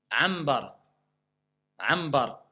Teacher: quand vous avez le nun avant le ba, le nun se transforme en mim pour faciliter la lecture du mot. D'accord? Donc ici, il se prononce comme un mime franc avec nasalisation. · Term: al-iqlab